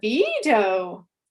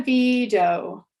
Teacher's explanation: contrasting the rise fall versus the low fall pitch contour with the same vowel